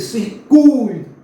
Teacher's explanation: Veja que o U é pronunciado mais forte e o I quase que não aparece. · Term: semivogal